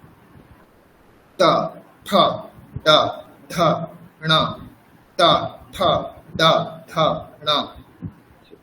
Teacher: মূর্ধা বলতে একদম ওপরের অংশ, মানে তালুর পরের অংশ, তালুর থেকেও ওপরের অংশ, সেখানে যাবে জিহ্বা। জিহ্বা ফোল্ড হয়ে যাবে, জিহ্বা ফোল্ড হয়ে সেখানে স্পর্শ করবে।